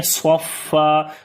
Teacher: جب صفا پڑھیں گے فا کے اوپر صفت ہمس آ جائے گی اور لمبا کریں گے، یہاں پر ایک زبر پڑھی جائے گی اور ایک زبر ختم کریں گے.